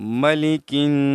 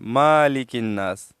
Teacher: मीम के ऊपर जबर है कड़ी नहीं है तो इसको मीम को हम जल्दी से अदा करेंगे इसको ऊंचा नहीं करेंगे अगर ऊंचा करते हैं तो यह गलत है बत समझ में · اکثر لوگ پڑھتے ہیں مالک الناس، مالک الناس پڑھتے ہیں، تو میم کے اوپر زبر ہے، کڑی زبر نہیں ہے، تو اس کو میم کو ہم جلدی سے ادا کریں گے، اس کو اونچا نہیں کریں گے